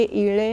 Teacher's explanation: 2 स्वरांच्या मध्ये आलेल्या अजमध्यस्थ डकारस्य लकार उच्चार करावा